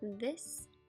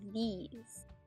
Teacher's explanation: with a French accent you tend to pronounce them the same but the vowel sound is different this is a short I it sound while these is a